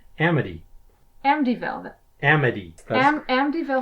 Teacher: making a t sound well there's a t in it but because I have the particular accent I have when I have a t in that place in the word I tend to pronounce it as a d